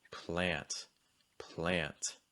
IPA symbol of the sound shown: æ